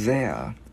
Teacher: mình đưa lưỡi qua giữa hai răng ép rung